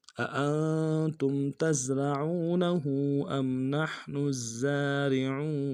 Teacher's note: أم نحن الزارعون أأنتم، حمزہ کو نون سے ادا کریں گے، اگلا جو حمزہ اس کو نون کے ساتھ ملانا ہے، نون ساکن غنہ کریں گے ، تا کو میم ساکن کے ساتھ ملانا ہے، یہاں پہ